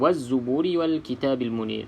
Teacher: bacaan wazzuburi Wal kitabil Munir okey lam lam ada tanda mati lam ada tanda mati dua-dua sama Alif Lam qamariah kena sebut huruf lam tersebut di dalam bacaan kita